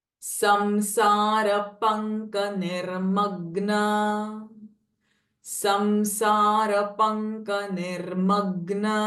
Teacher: because of the k sound, it has become the Anuswara sound is ng, nasalized ng, panka.